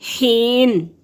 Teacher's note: یا ساکن سے پہلے لفظ کے نیچے زیر ہے تو یہ یا مدہ ہے، عام طور پر 1 الف کے برابر لمبا کرتے ہیں